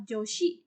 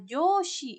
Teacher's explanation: Joshi, yang dengan bunyi O lebih pendek daripada Joshi yang dibunyikan lebih panjang. Kata yang pertama berarti perempuan, sementara kata yang kedua artinya atasan.